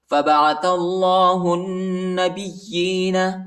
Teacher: یا کو شدت کے ساتھ سختی کے ساتھ پڑھیں گے